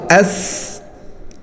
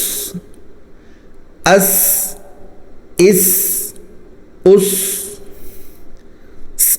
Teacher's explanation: सीन भी जा की तरह दांत मिलाकर निकालना है जबान बिल्कुल भी नहीं निकालनी और सीटी की आवाज आनी चाहिए